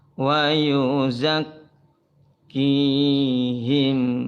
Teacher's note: Mim sukun ketemu waw. Ini idhar ya.